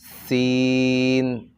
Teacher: সিন উচ্চারণের সময় এই সিটির মতো একটি আওয়াজ বাহির হতে হবে